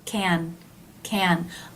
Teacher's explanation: I told her I can't I told her I can but do you notice that the last can can a little smoother and a little longer